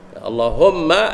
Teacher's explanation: atas mim ada syaddah, wajib al-ghunnah, kena dengung